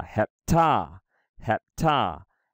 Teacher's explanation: But we got to put the emphasis on the ta.